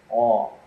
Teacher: it's produced when the back of your tongue is raised and the middle of your tongue kind of sinks down low